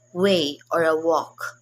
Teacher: the wo is called the bilabial glide